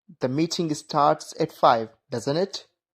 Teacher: When the speaker is not sure and wants real confirmation, we use rising intonation.